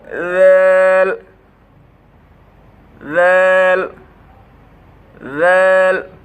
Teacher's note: জিহ্বার আগা সামনের উপরে 2 দাঁতের বড় 2 দাঁতের আগার সাথে লাগাইয়া পাতলাভাবে আদায় হবে